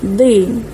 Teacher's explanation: makhraj huruf dad, tepi lidah tolak ke gigi geraham, di. Baca dengan tebal, bukan di, tapi di.